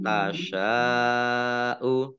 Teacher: Shin fathah alif mat tobi'i, tetapi karena bertemu dengan huruf hamzah dalam satu kata, maka menjadi mat wajib mutasil. Mat wajib mutasil dibaca panjang 5 harokat.